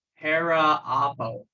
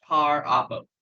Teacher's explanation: They just kind of drop the vowel out. Yeah, it drops the vowel because they didn't want to do like para apo.